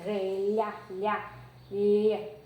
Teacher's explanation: Quando você percebe, você faz lhá, lhá, lhá, você percebe que o dorso da língua, que é essa parte do meio, encosta no palato duro. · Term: palatal